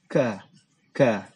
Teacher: Dan dia sifatnya ada hamas. Hamas itu ada sedikit hembusan udara ya · Kaf itu makhrajnya di depan huruf qaf ya. Kalau qaf itu di dalam, tapi kaf itu agak di depan. Dan dia sifatnya ada hamas. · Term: huruf kaf